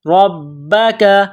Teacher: ساکن ہے تو یہاں پر قلقلہ کریں گے فادع لنا ربک را کے اوپر زبر ہے تو را کو موٹا کرنا ہے